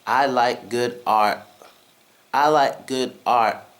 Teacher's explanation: I am holding my breath on the r sound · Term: silent T sound